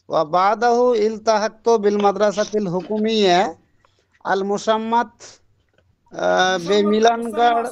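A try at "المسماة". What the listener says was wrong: সিন not শিন আল মুসাম্মাত বি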